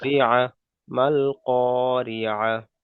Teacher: গোল তা এসছে, তাহলে এটাকে হা সাকিন করে তার আগের অক্ষরের সাথে মিলিয়ে পড়তে হবে